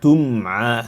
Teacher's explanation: See how we spend some time on the meme without ghunna, but nicely, smoothly. We connect the meme with the ayn that comes after it.